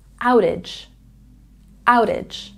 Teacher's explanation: in outage we have a stress on the first syllable